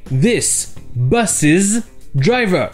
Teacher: Le apostrophe S se prononce is, comme si c'était IZ.